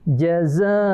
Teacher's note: Mad wajib muttasil. Panjangnya itu paling panjang tuh, 3 alif 6 harakah ya.